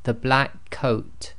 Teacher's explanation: the K and the C are said as one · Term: doubled up sound